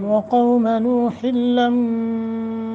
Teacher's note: होठ गोल करते हुए कौम काफ को मोटा भी करना है नरमी के साथ वो साकिन माक़बल फतह है नूह लम्मा इदगाम माल गुन्ना نوح